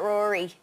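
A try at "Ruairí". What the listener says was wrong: So a bit more of a U sound, but it is the Irish for Rory.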